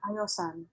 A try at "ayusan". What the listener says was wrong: Ayusan. Okay, so the o becomes u.